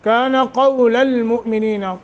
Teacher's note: قاف کو موٹا نرمی کے ساتھ پڑھیں گے